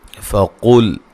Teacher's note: قاف کو موٹا ادا کریں گے، لام کو ہلانا نہیں ہے